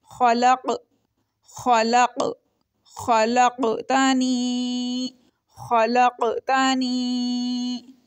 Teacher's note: قاف کے اوپر ہلکا سا جھٹکا لگ رہا ہے جزم آنے کی وجہ سے، کیونکہ یہ حروف قلقلہ میں سے ایک ہے۔